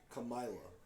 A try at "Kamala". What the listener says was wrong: There's no I in there for it to be Kamala. No, it's Kamala. They did a whole thing on how to pronounce her name. It's like comma, like the word comma, like comma. Kamala.